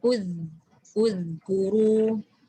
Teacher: Uzkuru tu zal tu mesti keluar kat ujung lidah.